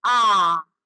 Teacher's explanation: इनका उच्चारण करते समय हमारा मुख अधिक खुलता है। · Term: विवृत स्वर